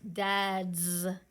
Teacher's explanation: That D is vibrating, so that S vibrates. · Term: Z